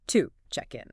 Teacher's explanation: to isn't pronounced with its full strong ooh vowel sound like if you said the word to. Instead, it gets reduced. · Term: schwa sound